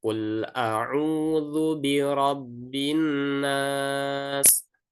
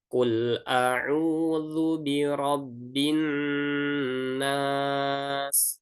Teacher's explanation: Membacanya harus tetap ditahan karena dia masuk ke dalam hukum nun bertasydid